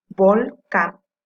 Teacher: Can es su sílaba tónica